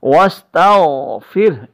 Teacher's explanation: یہ جو ہے حلق کے شروع سے ادا ہوتی ہے غائن جو ہے. واستغفر حالت وقف میں یہ ہا ساکن ہو جائے گی.